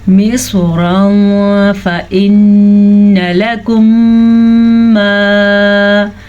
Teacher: نون پہ شد آنے کے ساتھ نون پہ غنہ ہوگا. میم اور نون دو ایسے حروف ہیں جب بھی ان پہ شد آئے گی تو غنے کی ادائیگی لازمی ہو جائے گی.